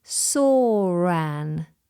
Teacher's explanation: The first is an intrusive R between saw and an.